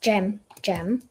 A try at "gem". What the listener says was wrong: Uh, gem. Uh, gem. Gem. Yes. Like a little jewel thing.